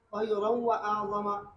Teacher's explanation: नून साकिन या तनवीन के बाद वाव और या आने की सूरत में भी इदगाम ताम है, गुन्ना नहीं है